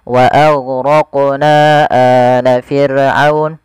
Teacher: Panjangnya 4 harokat atau 5 harokat, tidak boleh dikurangi. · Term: mad jaiz